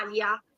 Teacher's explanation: c'è solamente un piccolo suono con la glottide, glottal stop tipico dell'arabo